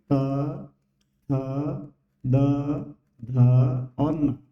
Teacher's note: जब हम बोलते हैं तो हमारी जीभ दांतों को स्पर्श करती है।